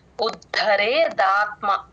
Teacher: ఉ కి దా ని జాయిన్ చేసి చెప్పాలి ఉ కూడా కూడా అచ్చు కాబట్టి కంఠంలో నుంచి రావాలి ఉద్ధరే దాత్మ ఇక్కడ